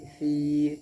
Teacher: या मद्दा होगी इसलिए कि या साकिन से पहले साकिन के ज़ेर है, इसलिए या मद्दा होगी। या मद्दा को एक अलिफ के बराबर खींच करके अदा करेंगे